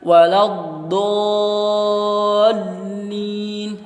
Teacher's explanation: Jadi huruf do-nya ini dibaca selama 6 harokat, karena hukumnya adalah mad lazim musaqqal qilmi. Kemudian setelah huruf do itu ada huruf lam berharokat tasydid.